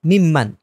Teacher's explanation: এই নুনটা মিমের সাথে গিয়ে মিলে যাবে, নুনটা পড়ায় আসবে না, মিম এখানের মধ্যে একটা তাসদিদ এসে যাবে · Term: ইদগাম মাল গুন্না